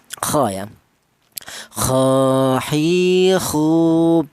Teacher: huruf berasal dari tenggorokan bagian atas ya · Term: huruf kha